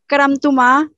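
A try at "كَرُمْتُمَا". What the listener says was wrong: करम नहीं करुम रुम रा के ऊपर पेश ही रहेगी करुमता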